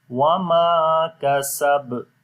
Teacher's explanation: On the ba we make qalqala and it will be strong qalqala